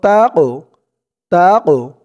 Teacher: কফটা কলকলার হরফ ধাক্কা দিয়ে পড়তে হবে